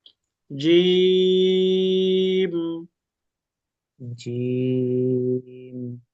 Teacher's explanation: জিম উচ্চারণ করতে হবে জিহ্বার মাঝখান থেকে। জিহ্বার মাঝের অংশটা উপরের তলের সঙ্গে লাগবে।